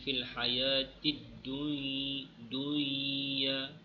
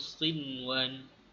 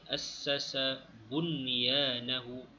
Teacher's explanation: Nun mati bertemu dengan ya, sepatutnya dia diidghamkan dengan didengungkan. Tetapi pada 4 perkataan ini perlu dibaca dengan izhar jelas. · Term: izhar mutlak